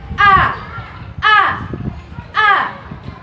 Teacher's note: Suara dikeluarkan dari tenggorokan bagian bawah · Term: huruf alif